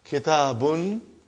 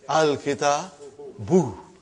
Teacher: Instead of bun, it became bu.